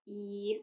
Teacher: So e is flat e. Our mouth is not rounded when producing that sound, and it's a front vowel